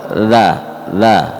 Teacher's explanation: Ada angin keluar. Kalau dza ini tidak ada angin keluar.